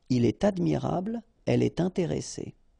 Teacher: in all these cases you should make the liaison, and in that case it's with T.